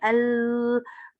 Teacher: और फिर जब उसको पास किया साइडों से, देखें हवा, टंग बोल के देखें एल, ऊपर जा रही है टंग, रास्ता रुक रहा है, लेकिन हवा हमारी बाछों से बाहर आ रही है, साइडों से निकल रही है, तो ये लिटरल कॉन्सोनेंट है इंग्लिश का।